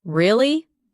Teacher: when you ask a question like really, your voice goes up slightly at the end. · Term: intonation